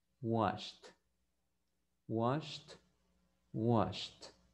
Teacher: Entonces, vamos a pronunciarlo con una T.